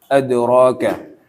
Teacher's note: Nah, kalau yang adroka itu rnya tebal